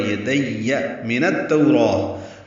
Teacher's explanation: نون کو التوراۃ کی تا سے ملائیں گے، ادغام شمسی ہوگا، تو و لین ہے، را پر کھڑا زبر ہے، 2 حرکات لمبا کریں گے اور پر پڑھیں گے۔